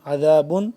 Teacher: عین کو حلقے درمیانی حصے سے، اس کے بعد دال جو نکالنا ہے ہم نے نرمی سے